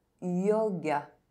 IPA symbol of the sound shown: j